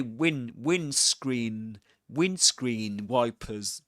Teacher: in the word windscreen, you don't pronounce the D. That's a that's a silent letter, I meant to say.